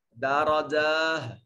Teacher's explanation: وقف کی صورت میں جب تا علامت تانیث واقع ہو رہی ہو تو وہ تا وقف کی حالت میں ہا بن جاتی ہے۔ درجہ، اس تا کو ہا سے بدل دیں گے، اور یہ ہا وہ حلق والا حصہ، ہا نہیں، ہا اقصی حلق سے جو ادا کرتے ہیں، یہ وہ والا ہا، اور اس سے یہ بدلے گا۔